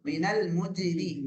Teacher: தர்கீக், ரா கஸ்ரா பெற்றனால மெல்லினம் ஓது.